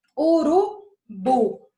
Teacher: Onde foi que eu demorei mais tempo? No bu. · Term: sílaba tônica